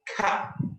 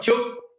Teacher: if you want to speak like orang Inggris, so like somebody from England, you make the sound like an ah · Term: ah sound